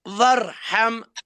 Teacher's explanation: ہائی نکلنا چاہے وسط حلق سے